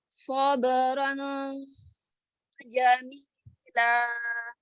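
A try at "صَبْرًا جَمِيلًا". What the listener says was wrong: Samarkan lagi. Tanwinnya samarkan lagi. Makhrajnya jangan nempel. Makhraj huruf nunnya. Angkat pangkal lidah. Angkat ya, bedakan dengan huruf sin. Ya, untuk membedakan makhrajnya, bukan untuk membedakan makhraj karena makhrajnya sama. Untuk membedakan sifatnya. Yang membedakan adalah sifatnya. Karena makhraj huruf shad dengan sin sama. Jadi kalau nggak dibedakan sifatnya, maka terdengarnya sama. Jadi sama-sama tipis ya.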